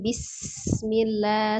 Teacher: bacaan basmalahnya juga sinnya diasofirkan ya, dialirkan.